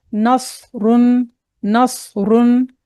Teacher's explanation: र को मोटा पढ़ेंगे क्योंकि र के पेश की हालत में है जब र के ऊपर ज़बर और पेश हो तो मोटा पढ़ते